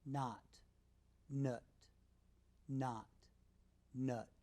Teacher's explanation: both sounds are made with the tongue in the center of the mouth ah the difference is that ah is said with a wide-open